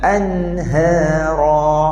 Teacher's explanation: Lebih kemas masa kita sebut anhara, huruf ha ni bunyi dia memang macam besar tetapi bukan tebal. Jadi jangan sebut anhara, ha.